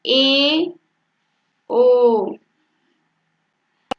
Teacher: और अर्ध समवृत्ति, अर्ध समवृत्त में आपका जो मुख द्वार होता है यह उच्चारण करते समय आधा बंद रहता है।